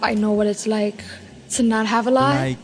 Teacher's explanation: New York Latino English speakers have a particularly light L